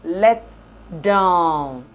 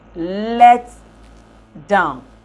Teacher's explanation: when the phrase is produced as a verb, it has a primary stress assigned to the second element, which is the preposition, while the compound noun counterpart has the primary stress assigned to the first element, which is the verb.